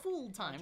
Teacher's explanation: So, my lips are relaxed here, full. Right? Not rounded. If I said it with ooh, it would sound like fool, which is not what I want here.